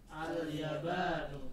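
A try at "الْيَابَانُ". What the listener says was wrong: Ya-nya 2 harokat.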